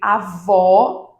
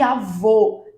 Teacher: Percebam a diferença entre avó, que tem um som mais aberto, e avô, que tem um som mais fechado. No caso de avó, o acento será agudo.